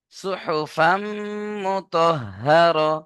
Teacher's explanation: গুণনা করতে হবে তানমিনকে মিম এর সাথে মেলাতে হবে